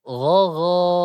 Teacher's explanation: untuk huruf yang digaris bawahi mesti dibaca tebal condong ke vokal o. Tidak boleh monyong.